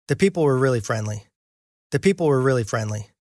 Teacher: People being the most stressed, and then also really and friendly also being stressed. The and were, flat, low in pitch.